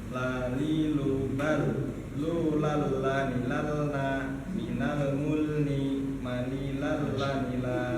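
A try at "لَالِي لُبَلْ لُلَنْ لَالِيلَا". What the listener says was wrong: Masya Allah, baik. Barakallah.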